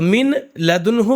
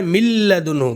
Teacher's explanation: ہم لام میں داخل کریں گے نون کی آواز کو. تو من لدنہ کے بجائے مل لدنہ، من لدن نہیں مل لدن پڑھیں گے تو مل لدنہ.